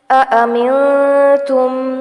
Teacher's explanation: نون ساکن کے بعد حرف تا آ رہا ہے جس کی وجہ سے اخفا کریں گے، یعنی نون کی آواز کو ناک میں چھپائیں گے